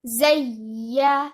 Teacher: you join it with ya mushaddad and you give nabr on ya. Nabr means raising the voice. Zayyanna. After giving nabr, after raising your voice on ya, you join it with noon mushaddad, giving it the most complete level of gunna, which is akmal gunna.